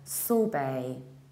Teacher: In the British accent, you skip R and you prolong the vowel, sorbet. In the American accent, we say sorbet, sorbet, so we pronounce stronger, sorbet.